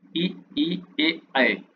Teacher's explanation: उच्चारण में जीभ का अग्र अग्र मतलब आगे का भाग काम करता है उसे अग्र स्वर कहा जाता है। जैसे पढ़ो आप इ ए आगे का जो जीभ का पॉइंट है उससे ही आप इनको शब्दों को बोल सकते हैं।